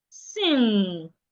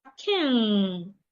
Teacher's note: This sound is articulated with your nose. So we call it a nasal sound.